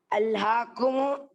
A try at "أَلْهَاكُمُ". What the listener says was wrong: അല്ല, അൽഹാക്കുമു മാത്രം പറയുമ്പോൾ അൽഹാക്കും എന്നാണ് പറയേണ്ടത്. മീമിന് എന്താ? സുക്കൂനാണ്. ലക്കും, ലക്കും ദീനിക്കും എന്ന് പറയുമ്പോൾ എന്ത് പറയുമ്പോൾ ലക്കും, നിങ്ങൾക്ക്. അതേപോലെ അൽഹാക്കും, നിങ്ങളെ അശ്രദ്ധരാക്കി.